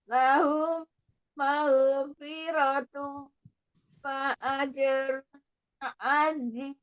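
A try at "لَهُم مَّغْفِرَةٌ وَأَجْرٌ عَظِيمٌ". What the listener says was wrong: Sempurnakan dulu gunnahnya, ada mim sukun ketemu dengan mimnya, idgham mimi, gunnah sempurna. Kemudian tanwin bertemu dengan wawnya juga idgham dia gunnah. Dia gunnahkan dulu. Lahum maghfiratu wa ajrun azim. Ya, suaranya harus agak dilepaskan ya ketika kita membaca Al-Quran, sama dengan ringannya ketika kita berkomunikasi, berbicara seperti ini ya.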